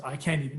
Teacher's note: Compare the three words and you'll notice how the T sound in can't is naturally harsher, louder, and it's more stressed than the others. · It's accentuated, it's emphasized. Can't is the loudest, most stressed word, just naturally speaking.